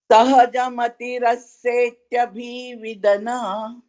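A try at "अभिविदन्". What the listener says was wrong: Vidan, that's all. Vidan, you can stop. Not Vidana. Vidan. There is one Harant. Vidan. Vidan. Like Hindi. Just stop like Vidan.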